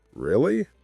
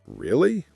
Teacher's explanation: For example, if I say, "Really?" with a rising intonation, it shows surprise. If I say, "Really?" with a flat or serious tone, it might sound bored or serious.